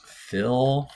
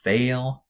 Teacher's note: that l sound kind of blends with the vowel a little bit more than things like t and z do